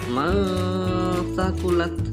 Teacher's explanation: dikarenakan ada nun sukun bertemu dengan huruf ta, maka cara membacanya suara nun sukun harus disamarkan.